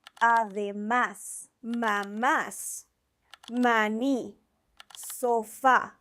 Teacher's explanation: These are words where the stress is on the last syllable. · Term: agudas words